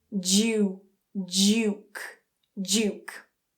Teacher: You may also find some native speakers saying this as 'duke' so that /d/ and /j/ combine and create a /dʒ/ sound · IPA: /dʒu:/